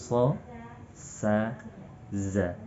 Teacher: ketiga huruf ini dijuluki huruf shafir karena suaranya tajam, berdesis